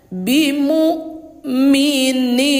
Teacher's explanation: Jadi ingat bunda, kalau di Al-Quran ini, kalau idghamnya warna orange, berarti dia jangan didengungkan, ya. Cuman dimasukkan aja suara tanwin ini ke huruf lam tanpa dengung, atau dileburkan tanpa dengung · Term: idgham bila gunnah